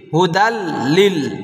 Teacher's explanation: হরফ কয়টি দুইটি রলাম বেলা অর্থ গুনা ছাড়া মিলিয়ে পড়া তো গুনা ছাড়া মিলিয়ে পড়ব তানবিনটাকে লামের সাথে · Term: ইদগামে বেলাগুন্নার